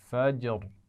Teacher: را کو موٹا پڑھنا ہے